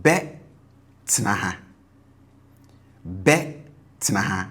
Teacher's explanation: So you notice the tone on the future tense marker is high, right? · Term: high tone